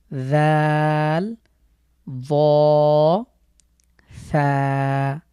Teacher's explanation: তো আমরা এই 3টি হরফের যে নিয়ম সেটি হলো আমাদের জিভের আগা উপরের দাঁতের সাথে লাগিয়ে একটু জিভটাকে একটু বের করতে হবে হালকা, এবং সফট করে আমরা এই 3টি লেটার উচ্চারণ করব।